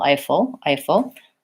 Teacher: Eiffel Tower has the AI diphthong just like the word I · Long, short. Second syllable is short and unstressed. First syllable is stressed.